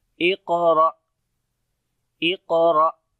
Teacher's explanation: قاف کو موٹا پڑھیں گے اور یہاں پر جزم ہے قاف کے اوپر، تو یہاں پر قلقلہ بھی کریں گے جو کہ کمزور قلقلہ ہوگا